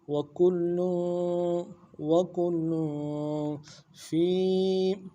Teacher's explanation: لام کے اوپر تنوین بھی ہے، غنہ کریں گے ایک مقدار میں